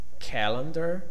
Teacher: The first one is stressed. The second and third are unstressed. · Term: stressed syllable